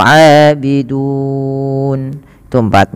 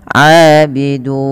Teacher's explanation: Boleh 2, boleh 4, boleh 6. Maka kita boleh memanjangkan lafal dun dengan 2, 4 atau 6. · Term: mad arid lisukun